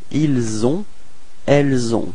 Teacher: Okay, just before leaving you, actually keep in mind that this liaison, this link, is actually quite soft. It's not really strong